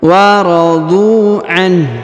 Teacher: Huruf dhu perhatikan dipanjangkan 2 harokat karena di depannya terdapat waw sukun, sedangkan alifnya tidak dibaca atau tidak dianggap.